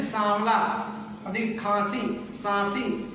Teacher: ध्वनि मुंह से भी निकल रही है और नाक से भी निकल रही है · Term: अनुनासिक